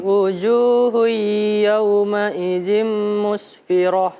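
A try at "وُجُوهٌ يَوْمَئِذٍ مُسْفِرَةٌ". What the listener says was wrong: Wujuh yaumaidin berdengungnya itu selalu lupa ya.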